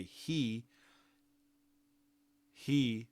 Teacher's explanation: the h doesn't get any special movement like I'm putting my mouth in the place to be there for the vowel. There's no specific movement for the H.